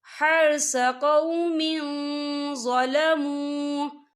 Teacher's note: صر اصابت حرث قوم ظلموا، یا دیکھیں ظلموا، یہاں پہ واو مدہ ہو رہا ہے، واو ساکن ہے، واو ساکن سے پہلے پیش ہے، اور اس پہ چھوٹی سی مد بھی ہے، تو ہم اسے 4 حرکت کے برابر کھینچ کے پڑھیں گے